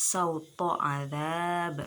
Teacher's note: Di situ ada huruf to, makharijul hurufnya yaitu ra'sul lisan, ujung lidah, dan sifat-sifatnya jahr, syiddah, isti'la, idbak, ismat dan qalqalah